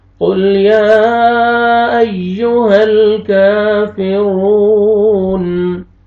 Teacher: کاف کے اوپر فتحہ الف صغیرہ الف مدہ کا قائم مقام، آپ نے کاف کو کھینچنا ہے